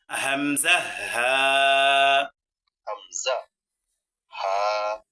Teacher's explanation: কণ্ঠনালীর শুরু হইতে উচ্চারিত হয় দুইটি হরফ, হামজা, হা। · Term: 1 নং মাখরাজ